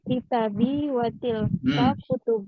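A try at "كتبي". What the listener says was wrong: Kalau nggak ada alifnya, bacanya kutubi, Bu ya. Kalau nggak ada alifnya, kutubi.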